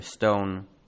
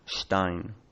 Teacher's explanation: German also turned an S into a sh before a consonant